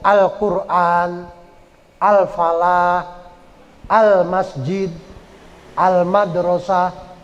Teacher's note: kalau yang al-nya hidup kedengaran l-nya ya itu namanya al-qomariah · Kalau yang alnya hidup, kedengeran L-nya, ya, itu namanya al-Qamariyah, kayak Al-Quran, Al-Falah, Al-Masjid, Al-Madrasah, itu ada al-alnya itu, L-nya, itu namanya Al-Qamariyah.